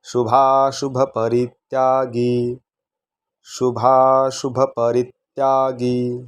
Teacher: री रस्व म्हणायचं आणि ग ला दुसरी वेलांटी गी दीर्घ म्हणायचं